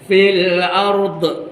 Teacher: Ni huruf dha ni jangan terlantun ya